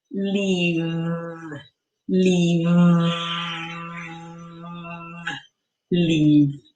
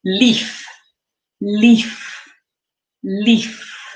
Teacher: Yeah, this is the word leave, which has the sound, which is made with our lip, our bottom lip, touching our top teeth and then vibrating the bottom lip